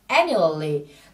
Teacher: Từ này trọng âm rơi vào âm tiết đầu tiên nhé.